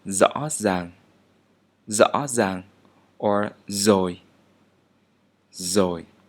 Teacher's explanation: And one more time, due to the dialectal difference in the northern dialects, the letter r is an alveolar sound but without the roll tone. So it would sound like the English z.